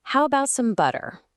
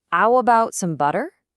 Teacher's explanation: The H in how is gone, replaced with a glottal stop. The T in about gets replaced, and the TT in butter also gets replaced.